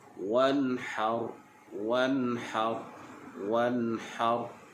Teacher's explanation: tak perlu kita dengung, hanya nyatakan bunyi nun sahaja. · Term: izhar halqi